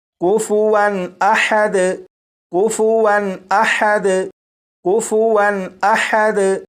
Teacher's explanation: واو کے اوپر 2 زبر ہیں یعنی تنوین ہے، یہاں پر غنہ نہیں کریں گے